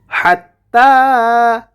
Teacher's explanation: হা কণ্ঠনালীর মধ্যখান থেকে